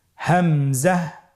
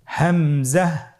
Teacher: আপনারা আমার সাথে বলুন হামজা হামজাহ হামজা হরফটি উচ্চারণের স্থান হা এর মতই। হা হরফটি যেখান থেকে আমরা উচ্চারণ করেছি একই জায়গা থেকে আমরা হামজা হরফটি উচ্চারণ করব হলকের শুরু হতে।